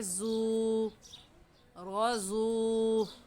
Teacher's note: वाव मद्दा है, इस वजह से इसको भी एक अलिफ के बराबर खींच कर पढ़ेंगे।